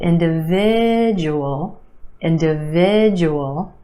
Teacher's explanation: Five syllables in this word. Emphasis on the third syllable, the I sound.